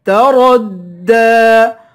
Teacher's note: کی مقدار کھینچ کر پڑھیں گے، الف حروف مدہ ہے، تَرَدَّى، را کو دال سے ملائیں گے، را کو پر پڑھیں گے ، دال کو ایک الف کی مقدار کھینچ کر پڑھیں گے،